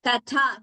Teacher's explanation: Very careful we must be to only pronounce the second tha as mahaprana. We should not make the first one also alpa prana, mahaprana, or we should interchange by pronouncing that we should take care.